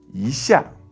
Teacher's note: But when E is placed before a 4th tone character, it changes into a 2nd tone.